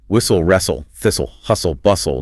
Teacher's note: >> In British English, whenever you see an S T L E or a D T L E at the tail end of a word, that T essentially dissolves into the L. It never makes a sound.